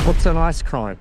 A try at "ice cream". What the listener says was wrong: Are you saying ice cream or ice crime? Okay, it's just with your accent.